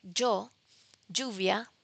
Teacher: the English phoneme j occurs in Spanish, but not as a phoneme. It occurs as an allophone